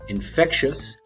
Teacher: Infectious, stress on the middle syllable.